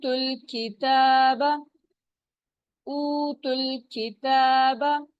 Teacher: ता की पेश जो है वो फौरन लाम से मिल जाएगी